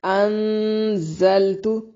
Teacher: ان نون ساکن کا اخفا مع الغنہ